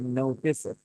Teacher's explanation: So no went a little bit higher on pitch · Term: stressed syllable